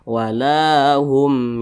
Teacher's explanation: huruf mim nah tapi ini mim sukun berjumpa dengan huruf ya maka hukumnya izhar syafawi dibaca jelas tidak berdengung